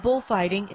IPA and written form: b'ʊlf,ɑɪtɪŋ (Bullfighting)